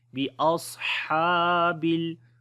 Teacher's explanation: हा को गले के दरमियान वाले हिस्से से पढ़ेंगे और लंबा भी करेंगे